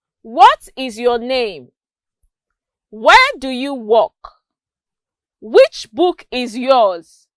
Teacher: I used a falling intonation at the end of each of the questions. That shows that falling intonation is used at the end of WH questions.